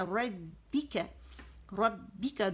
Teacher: ربک دونوں ہونٹوں کے گیلے حصے ملیں گے ، ربک کا باریک آواز ایک کاؤنٹ کے لیے اوپر جائے